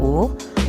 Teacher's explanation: Lafal vokal U dilafalkan dengan cara menarik lidah ke belakang dan ke atas, disertai dengan menghembuskan udara keluar, sedangkan bentuk mulut dibundarkan